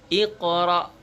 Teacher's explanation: menghukum Oke huruf qaf ikoro Hai bukan iqro' tapi ikoro ya karena huruf qaf termasuk huruf Qalqalah jadi dipantulkan